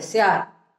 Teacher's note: आपली जीभ वरच्या दाताच्या मागे जिथे लागते तिथे जर क्षणभर ठेवली तर तो हलंतचा उच्चार एकदम बरोबर येतो. म्हणजे तो अवयव ज्या ठिकाणी आहे त्या ठिकाणी क्षणभर ठेवायचा तोंडातल्या बाबीच्या बाबतीत, तर त्याचा उच्चार हलंत होईल.